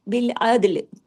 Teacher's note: दाल पे कलकला भी करना है, क्योंकि आप देखिए दाल जज़म के साथ आ गया ना। पिछली क्लास में बताया ना, कुतुब जद के 5 हरूफ पक्के याद रखिए, कौफ तो बा जीम दाल, जब भी जज़म के साथ होंगे कलकला होगा, दाल पे कलकला होगा, लाम पे नहीं होगा।